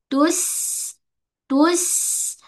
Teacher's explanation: dia ada sifat desiran